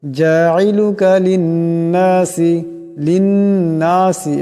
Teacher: লিন্নাসি এখানে নুন মুসাদ্দাদ, নুন মুসাদ্দাদের একালে পরিমাণ গুণনা হবে।